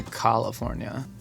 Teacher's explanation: There's almost a vocal fry